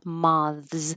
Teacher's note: We do say the th and it's voiced and it takes a lot of time